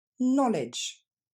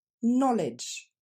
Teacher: Quand un mot commence en anglais par le contexte KN, on n'entendra pas le K, on n'entendra que le N.